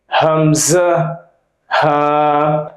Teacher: এক নাম্বার মাখরাজ হলকের শুরু হইতে হামজা, হা, অথবা বলতে পারেন কণ্ঠনালীর শুরু হইতে, কণ্ঠনালীর শুরু হইতে উচ্চারিত হয় হামজা, হা।